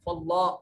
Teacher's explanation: کلمہ اللہ سے پہلے زبر ہے تو اس کو موٹا کر کے اور پر کر کے پڑھیں گے